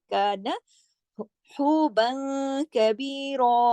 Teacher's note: یہ ہلکا، یہ باریک والا کاف ہے، زیادہ کا دو حرکات کھینچے گا، نون زیادہ نہیں کھینچے گا، ایک حرکت، کان حوبا کبیرا۔